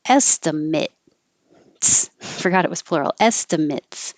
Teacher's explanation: if this is a noun the a t e will sound like an it